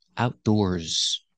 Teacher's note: you have an S at the end making a z sound like zebra